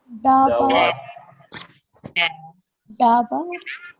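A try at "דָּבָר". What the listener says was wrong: Not ba, dawar. Dawar. Dawar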